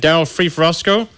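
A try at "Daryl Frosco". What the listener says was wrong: Verosco. It was just all one word. I didn't even know what you said. You just puked on the mic.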